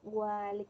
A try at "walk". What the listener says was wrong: Remember that the letter L doesn't sound walk and cycle.